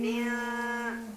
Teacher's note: dibacanya itu samar-samar dengungnya, didengungkan nil dan samar jadi nil. Nah, kemudian ditahan selama 2 harokat. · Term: ikhfa